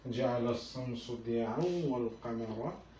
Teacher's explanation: এখানে যেহেতু আন আছে আর এটি যেহেতু ওয়াও আছে, তো সেটি কি হবে, এটি আন শব্দটি ওয়াও শব্দে চেঞ্জ হয়ে যাবে, অর্থাৎ ইদগাম। এটিকে বলা হয় ইদগাম, ইদগাম ঘটবে এখানটায়।